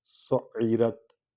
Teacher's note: وَإِذَا الْجَحِيمُ سُعِّرَتْ، سُعِّرَتْ، یہاں سٹریس آئے گا عین پر کیونکہ عین حروف ہلکی میں سے ہے اور اس پر وہ شد ہے، شد والا حرف 2 بار پڑھا جاتا ہے